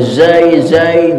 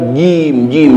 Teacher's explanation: zai di depan, di gigi depan, jim di dalam mulut